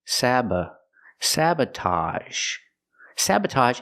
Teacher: the second syllable is relaxed uh